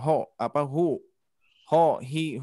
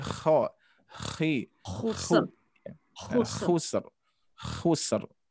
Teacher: huruf kho diusahakan dengkurannya terasa ya, biar terbiasa saja. Biar setidaknya tidak terlalu jauh ya mahrajnya, tidak hu, hi, hu, tapi kho, khi, khusr.